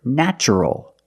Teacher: nature and natural we see the spelling pattern t r e in this spelling pattern T is pronounced with the CH sound like chicken